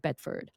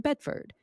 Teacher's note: I used to go into something called vocal fry like this. And I would do that on words that had R towards the end like Bedford is where I live and I would say Bedford for decades.